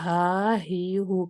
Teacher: हा में आपने वोकल कॉर्ड को खोले रखना है, साँस का जारी रहना है